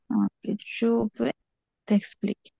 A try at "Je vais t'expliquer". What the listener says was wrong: আচ্ছা, জো বা হবে না, এটা জো ভে হবে, কারণ আ ই এস উচ্চারণ হচ্ছে একার, তাহলে ভয় একারে ভে। ঠিক আছে, জো ভে।